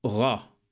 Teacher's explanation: In Modern Hebrew, it's a voiced velar fricative or approximate rather than a trill, r.